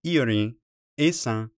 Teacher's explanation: ends with a nasal vowel not an n sound